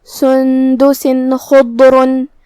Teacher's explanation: خا حروف الاظہار میں سے ہے اور اظہار کا معنی ہے ظاہر کرنا اور تنوین کی اصلیت نون ساکن ہے، تو ہم یہاں تنوین ظاہر کریں گے اور بغیر غنہ سے یہ حکم کو ادا کریں گے.